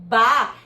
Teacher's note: Veja que quando eu faço esse movimento do Bá, eu uno os meus lábios rapidamente e solto rapidamente, como se fosse um movimento de explosão. Isso é uma consoante bilabial que a gente chama plosiva. Então, eu uno os lábios, solto e aí depois eu coarticulo com a vogal A.